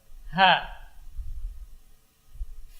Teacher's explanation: ha yang keluar dari aqsal hal, dari pangkal tenggorokan